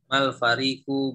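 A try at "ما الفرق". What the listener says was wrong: Mal farqu, bukan farik. Farik itu ada iya sebelum fa.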